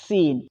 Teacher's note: اگلا حرف سین، یہ بہت ہی سمپل ہے، زبان کی نوک اور دونوں دانتوں کے درمیان سے ادا ہوگا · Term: سیٹی